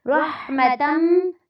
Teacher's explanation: رحمتاً میں را کو پر کرنا ہے اور ہا پہ آواز کو آپ نے چلانا ہے۔